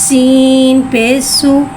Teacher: सीन को एक अलिफ यानी 3 हरकत के बराबर खींच के पढ़ेंगे। सीन में सीटी को ज़ाहिर करके पढ़ेंगे। सीन के ऊपर पेश को टोकी गुलाई के साथ अदा करके पढ़ेंगे।